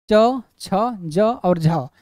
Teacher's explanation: तालू से ये जीवा स्पर्श तो करती है लेकिन स्पर्श करने के साथ स्पर्श करने के लिए संघर्ष करनी पड़ती है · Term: स्पर्श संघर्षी व्यंजन